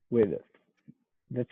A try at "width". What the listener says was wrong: Yeah, it sounds like you're making a vowel sound in the middle. And you don't want to do that. It's just the with. put your mouth in the position to make a D sound after the I. With, and then do the TH. With.